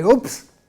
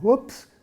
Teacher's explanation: if you nearly drop something and you say, oops, that's got to be said with a rising tone. Whoops, going up.